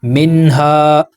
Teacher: मिन्हा, अलिफ से पहले ज़बर है, अलिफ रूफ़ मद्दा है, ज़बर को 2 हरकत के बराबर खींचेंगे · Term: हरूफ मद्दा